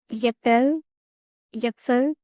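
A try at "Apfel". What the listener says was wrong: Apefel. Apefel. Not there's no year. So when you're saying Apefel. So it's there's no year. So as we say ape and chimpanzee, so try to say the ape fell. So ape gir gaya like that. Ape fell. So you have to practice like that.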